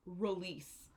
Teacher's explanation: the main base form of this verb is release here the stress is on the last syllable